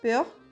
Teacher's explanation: el EU con el OEU, que se va a pronunciar como si quisiéramos decir una E y una U al mismo tiempo